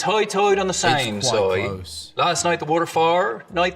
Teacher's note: Islanders are sometimes called high tiders because of that particularly distinctive oi sound